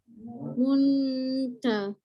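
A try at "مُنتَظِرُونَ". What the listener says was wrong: Okay, dia tak bunyi mun, dia tak bunyi mut pun. Okay, dia tengah-tengah. Itu cara sembunyi. Kita penuhkan. Muntaziruna.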